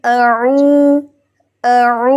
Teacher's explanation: عین جو ہے وہ ہمارے وسط الحلق یعنی کہ حلق کے درمیان سے ادا ہوتا ہے